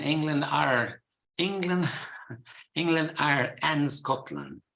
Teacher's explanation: sometimes the British English put the intrusive r